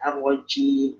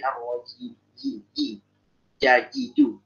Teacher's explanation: Kalau C itu dia ke depan, kalau jim itu di tengah lidah.